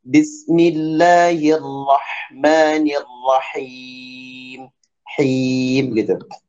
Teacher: Nah, kemudian ha ini harus bersih ya. Ha dari tengah tengah tenggorokan kita di sini wastul halki, kemudian ada sifat hamas di situ ya.